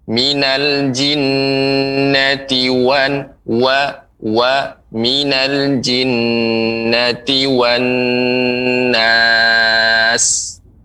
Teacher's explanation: Kemudian pengucapan wan, dia dimonyokkan bibirnya.